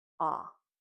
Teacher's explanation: our mouth is open, our tongue stays at the bottom, and it is a voice sound when we say short O, ah.